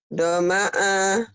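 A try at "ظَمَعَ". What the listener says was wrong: Zoma'a. Z ya. Pakai Z. Zoma'a.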